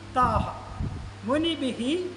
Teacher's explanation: ആ ഹായ് ഹീയൊക്കെ വരുന്നത് അതാത് വിസർഗങ്ങളുടെ ഉച്ചാരണമാണ്. അതിന് മുമ്പത്തെ വർണ്ണം എങ്ങനെയാണോ എന്നതിനെ ആശ്രയിച്ചാണ് ആ ഉച്ചാരണം വരുന്നത്.